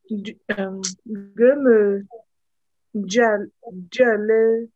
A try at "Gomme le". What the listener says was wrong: Le, pas les, le. Gomme le.